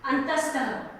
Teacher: विसर्ग का उच्चारण जब करते हैं तो ह का उच्चारण होता है